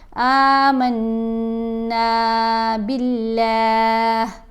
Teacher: اب با کے نیچے زیر آ گئی نا، اس لیے لام کو باریک پڑھا